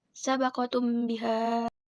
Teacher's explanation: Hukum bacaan disebut ikhfa syafawi apabila mim sukun bertemu dengan ba. Cara membacanya harus disuarakan samar-samar di bibir dan didengungkan